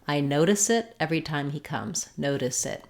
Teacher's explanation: those two together and it'll sound like no diss it so you might even think about it as though the S is jumping onto the word it